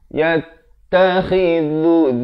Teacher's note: dhu pula di hujung lidah